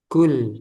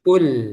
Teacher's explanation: Ini diperhatikan jangan sampai sama dengan kaf. Nah, kalau kaf dia ada hames, ada udara, ada angin. Kalau qof jangan ada jangan ada angin.